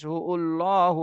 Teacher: আল্লাহ শব্দের ডানে পেশ এজন্য আল্লাহ শব্দ মোটা করে পড়তে হবে